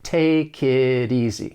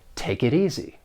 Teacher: the final T in it, I am going to pronounce it as a flap T. It's going to sound more like a soft D. And this is very common with the American accent because I am from the United States, and it often occurs when the T comes between two vowel sounds.